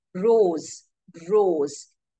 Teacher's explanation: sound is voiced that means it is produced using your vocal cords · even though there is letter s here what are you hearing you're hearing the z sound